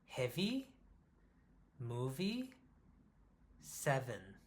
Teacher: And I'm pushing air out also. >> Air is being pushed out through the front teeth and the bottom lip too. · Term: V sound